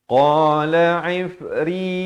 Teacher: ri jadi nipis di sini. Jangan baca ifri, itu tebal, salah. Ramai yang silap di sini dibaca tebal.